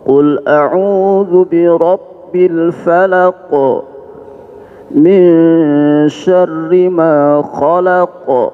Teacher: Pokoknya ketika kita berhenti ada qalqalah, itu namanya qalqalah kubra.